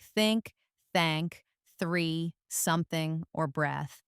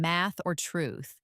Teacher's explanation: It doesn't vibrate at all. It's purely a stream of air flowing over your tongue. No buzzing in your throat. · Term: voiceless th sound